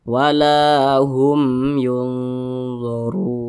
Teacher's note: karena dia izhar maka dibaca jelas tidak didengungkan jadi jangan dipanjangkan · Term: izhar syafawi